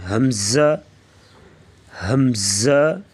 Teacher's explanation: ہا کو بغیر کھینچے میم کے ساتھ ملائیں گے اور میم میں آواز کو لمبا نہ کریں